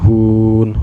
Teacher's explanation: Hun dipanjangkan boleh 2 harakat, boleh 4 harakat, dan juga boleh 6 harakat ya. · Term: mad arid li sukun